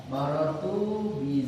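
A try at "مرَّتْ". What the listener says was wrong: Bukan maror tuh, marot. Marot. Kan Zainab berpapasan, bukan maror tuh. Kalau maror tuh aku ini Zainab berpapasan dengan Kotomi sama Wabar ya. Maror tuh saya. Maror tuh fiil.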